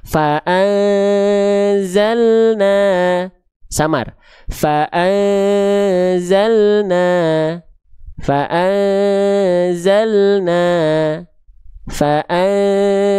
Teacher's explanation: ujung lidahnya enggak lagi nyentuh ke langit-langit karena itu jadinya n jelas jadinya nun.